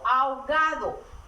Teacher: En la palabra ahogado no se pronuncia la H.